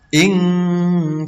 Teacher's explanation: non mati bertemu sin, ini dibaca dengung atau bacaan ikhfa